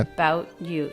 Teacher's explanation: The break in sound signifies the stop T.